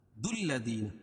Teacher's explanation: دال کو لام میں ملائیں گے اور لام کو تشدید ہے